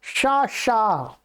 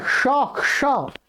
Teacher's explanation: ये तालव्य शकार है, तालव्य शकार है शा शा, तो इसके स्थान में आपको मूर्धन्य नहीं बोलना है